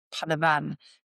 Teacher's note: the tongue, it's like a rolled R. So the tongue is coming to behind the teeth. It almost sounds a bit like a D.